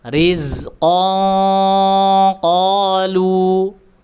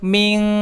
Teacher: disamarkan terlebih dahulu tanwinnya, kemudian diarahkan ke huruf qaf dan diberikan sifat tebalnya. Rizqan qalu, kemudian min qabli, tidak boleh min, itu terlalu tipis, dia harus tebal mengikuti sifat huruf tebalnya. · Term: ikhfa